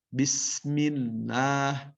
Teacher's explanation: lafaz Allah didahului dengan huruf yang berharokat kasroh, maka tetap dibaca tarqiq